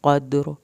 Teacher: قاف کو پر کر کے پڑھنا ہے